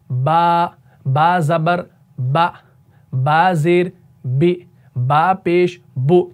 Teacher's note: लेकिन अब यहां पर हमने दोनों होंठों के तर हिस्से को लगाना है, यानी जो आपका ये ऊपर वाला होंठ है ना, इसका अंदर वाला तर वाला हिस्सा और निचले वाले होंठ का अंदरूनी तर वाला हिस्सा, इन दोनों को जब आप मिलाएंगे ना तो आपका हरफ बा अदा हो जाएगा